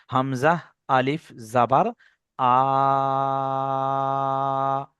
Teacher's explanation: আলিফ মাদ্দাহকে এক আলিফ পরিমাণ টান দিয়ে পড়তে হবে। তাহলে এক আলিফ বলতে কি আমি সেটা বললাম, 2 থেকে 3 সেকেন্ড একটা আঙুলের ইঙ্গিত দিয়ে, সেও আপনাদের ধরে ধরে দেখিয়ে বুঝিয়ে দিলাম।